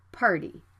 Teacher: the t is between an r and a vowel so the sound can be flapped